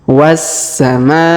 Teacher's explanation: huruf ma ya dipanjangkan lima harakat